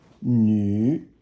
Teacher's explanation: nu is third tone, and it means a woman